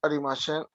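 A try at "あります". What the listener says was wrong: No, no es SH al final, una S. Arimasu.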